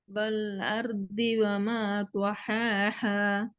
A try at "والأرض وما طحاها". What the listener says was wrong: பாத்தீங்கன்னா என்ன வித்தியாசம்? இதுதான் பிரச்சனை. இங்கதான் பிரச்சனை. இப்ப இந்த இடத்துல அடிப்ப காணாம போயிடுச்சு. வல்லருதி பாத்தீங்களா? எங்க பிரச்சனை ஸ்டார்ட் ஆகுது.